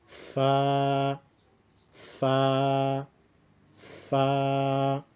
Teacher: ثناء علیا کا سرا اور نیچے کے ہون کا اندرونی حصہ جب آپس میں مل جائے تو اس سے فا ادا ہوتی ہے۔